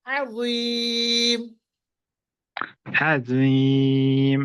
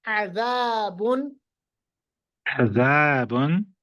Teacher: अज़ीम में पढ़ेंगे होंठों को गोल करके, अज़ाब उनमें पढ़ेंगे सीधा